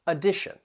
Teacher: So the words have 3 syllables, and that first and third syllable, you can hear that schwa sound, that sound. The T-I-O-N is pronounced as shun, and the syllable stress comes before it on the second syllable